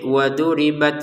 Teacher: Waduribat di sini ada untuk taknya letupan nafas sedikit, waduribat seperti itu ya.